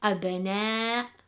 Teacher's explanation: There are 3 levels of Qalqalah. Number 1, we have a subtle echo when the Qalqalah is made in the middle of a word